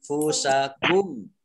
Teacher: nun sukun bertemu dengan huruf fa juga sama, bacaan ikhfa dibaca samar-samar.